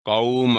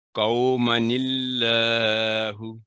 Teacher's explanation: وقف پڑھیں گے تو الف پڑھا جائے گا، جاری تلاوت میں الف ڈراپ ہو جائے گا. قوم، وقف کیا، وقف کے بغیر قومن اللہ.